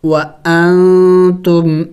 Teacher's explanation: نون ساکن ہے یہاں اخفا کریں گے، ناک میں آواز چھپائیں گے